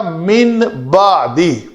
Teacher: نون کو میم سے بدل کر پڑھیں گے۔ یہ نون نہیں رہے گا، نون میم بن جائے گا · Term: اقلاب